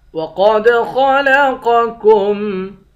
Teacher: وَقَدْ خَلَقَكُمْ، قاف کو موٹا پڑھیں گے، قاف کو دال کے ساتھ ملا کر دال پر قلقلہ کریں گے، دال حروف قلقلہ میں سے ہے۔ خا اور قاف دونوں کو موٹا پڑھیں گے